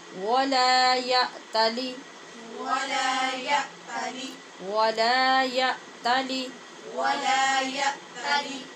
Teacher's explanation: یا تالی میں حمزہ پہ جھٹکے سے آواز بند کریں گے اور لام کی زیر کی آواز کو لمبا کر کے یا تالی نہیں بنائیں گے